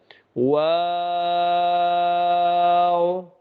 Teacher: वाव में शुरू में भी हमने होठों को गोल करना है और आखिर में भी हमने होठों को गोल करना है वा [हंसी] वा वाओ और जहां पेश आ जाए जिस हर्फ